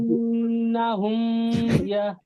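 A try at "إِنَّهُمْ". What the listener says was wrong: ইন্না হুম কিন্তু গুণা নাই, ইন্না হুম কিন্তু আপনার ভুল হচ্ছে।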